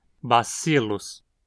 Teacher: a penúltima sílaba é sil, termina em consoante e, portanto, é onde o acento precisa cair